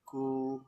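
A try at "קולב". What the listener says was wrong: Kof. Kasih tanda baca O, Pak. Ko.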